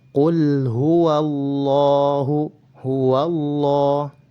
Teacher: lafzul jalalah didahului oleh harakat fathah, maka harus dibaca dengan tebal